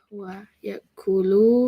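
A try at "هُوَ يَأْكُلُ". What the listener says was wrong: Yes, huwa ya'kulu. Don't make it long. Huwa ya'kulu. Huwa ya'kulu.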